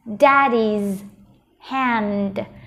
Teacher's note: mình sẽ đọc thêm cái sở hữu cách là z